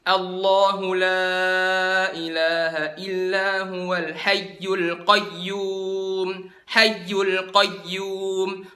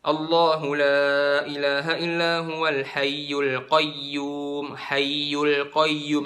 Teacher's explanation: bukan Allahu La ilaha illa huwal hayyul Qayyum hayyul Qayyum tapi hayyul qoyyum dihentakin sedikit setengah detik